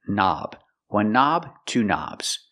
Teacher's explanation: the K is silent. Don't pronounce the K. Start with the N sound, knob. One knob, two knobs.